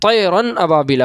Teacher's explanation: تنوین کو بغیر غنہ کے ظاہر کر کے پڑھیں گے، اس کو اظہار حلقی کہتے ہیں